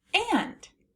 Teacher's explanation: is followed by the letter N it can make a no a sound that sounds like it's coming through your nose or the nasalized a